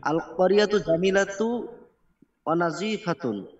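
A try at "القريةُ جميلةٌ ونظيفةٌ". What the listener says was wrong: জামিলাতুন ওয়ানাজিফাতুন, এটা তো সিফাত, এরা মেয়েদের নাম তো না, তানবিন তো ভয় পাচ্ছেন নাকি?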